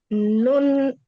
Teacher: Nun ujung lidah ketemu dengan tumbuhnya gigi atas